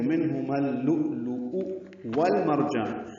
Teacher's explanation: والمرجان کے جا کو 2 حرکات لمبا کرنا ہے، نون کی پیش کو پڑھنا ہے معروف طریقے سے جلدی، اور اگلی آیت ایک ہی سانس میں پڑھنی ہوگی. · واو کو لام سے ملا دیں گے، اظہار قمری ہوگا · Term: مد عارض سکون